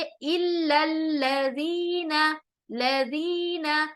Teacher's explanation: زال نرمی سے ادا ہوگا، زال حروف لتویہ ہے، نرم آواز کے ساتھ اس کو ادا کریں گے